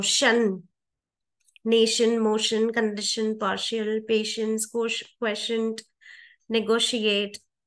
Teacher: the unstressed I distorts the T to a sh sound